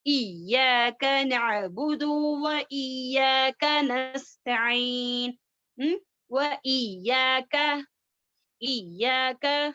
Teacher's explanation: کاف جو ہے ہماری زبان کی جڑ ہارڈ پارٹ میں ٹچ ہوتی ہے. جو سخت حصہ ہے تالو کا اندرونی حصہ سخت حصہ وہاں پر ٹچ ہوتی ہے ہماری زبان کی جڑ.